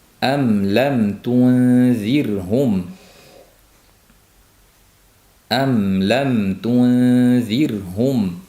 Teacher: Mim harfining maxraji lab bo'lgani uchun izhor shafaviy deb nomlandi.